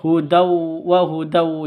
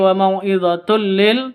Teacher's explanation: tanwin bertemu dengan lam, masuk ke lam tanpa dengung, idgham bila gunnah. Jadi tidak perlu didengungkan.